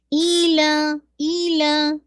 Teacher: ایلا میں آپ کو 2 کاؤنٹ اسٹریچ کرنا ہے